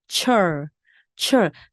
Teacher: 입술이 앞으로 쭉 나오면서 철, 철. 바람이 굉장히 많이 나옵니다.